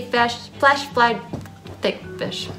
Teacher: f which is a labiodental sound lip and teeth and th sounds so the tongue tip coming to the back